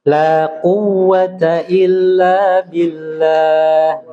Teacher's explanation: wau bertasdid tidak boleh ditempo ya cukup ditasdidkan saja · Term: Waw bertasydid